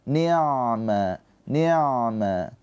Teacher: Di sini ain sukun. Ain sukun mempunyai sifat tawassud. Tawasut itu ada aliran suara sedikit.